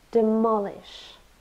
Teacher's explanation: three syllables, demolish, and we stress the second one, demolish. It's a verb.